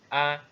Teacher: untuk huruf alif ini ya maksudnya adalah pada tenggorokan yang terjauh